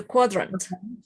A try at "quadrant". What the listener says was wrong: Quadrant. Quadrant. Quadrant. Quadrant.